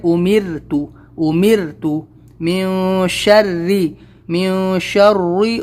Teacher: امرتو، امرتو، من شری، من شری، ری نہیں بولنا ہے، شری، بالکل آواز باریک کرنا ہے، زیر کی آواز نیچے لے جانا ہے، اور را کو پتلا کرنا ہے